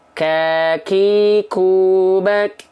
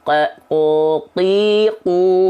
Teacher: sebagian kecil dari pangkal lidahnya menempel ke langit-langit yang keras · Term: sifat hams